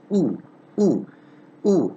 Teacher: of my lips rounded oh my lips are rounded so oh in these cases the lips become rounded and it's half close almost close and it's a short vowel